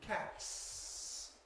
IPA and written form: kæts (cats)